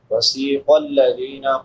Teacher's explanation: قاف حروف مستعلیہ میں سے ہے، اس کو پر پڑھیں گے. الذین، ذال نرم حروف میں سے ہے، 3 حروف جو نرمی سے ادا ہوتے ہیں، سا، لال، وا.